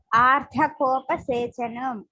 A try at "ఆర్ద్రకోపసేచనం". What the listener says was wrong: దాకి ఒత్తు లేదండి. ఆర్ద్ర. హిందీలో అద్రక్ అంటారు. ఆర్ద్రకోపసేచనం అది.